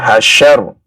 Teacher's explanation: tafasyi yaitu menghembuskan nafas sekaligus juga menghembuskan suara · Huruf shin ya, dari pertengahan lidah ya. Bukan dari ujung ya, dari pertengahan lidah.